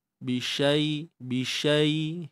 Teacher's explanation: Andai kata kita nak waqaf bi syai kan, kalau kita nak berhenti maka jadilah mad lin kat situ. Ha, kalau tak berhenti tak jadi lagi mad.